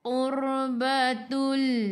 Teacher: qur sebelum ra baris depan kena baca dengan tebal, lidah naik ke atas